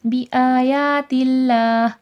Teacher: بآیات اللہ، کھڑے زبر کھینچ کے پڑھا جائے گا اور اللہ لفظ سے پہلے زیر ہے، اللہ لفظ نارمل پڑھا جائے گا، موٹا نہیں کیا جائے گا